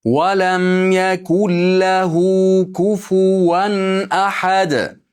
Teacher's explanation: Dalda to'xtaganligimiz uchun nima qilamiz? Ahad deb turib qalqala qilamiz.